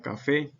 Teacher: cuando éstas terminan en vocal y en las consonantes en s llevando la mayor fuerza de voz en la última sílaba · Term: palabras agudas